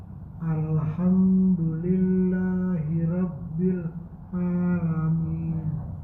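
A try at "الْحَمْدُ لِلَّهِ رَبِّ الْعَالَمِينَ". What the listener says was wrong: Nah, kalau ro harus tebal Pak. Enggak boleh dibaca tipis. Rob harus tebal.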